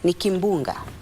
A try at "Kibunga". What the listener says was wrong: No, Kibunga. Without the M. It's K-I-B, not K-I-M-B.